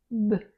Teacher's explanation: The top and bottom lips touch briefly followed by a small explosive sound B. That's why it's different from M because it pops open B, but it does vibrate.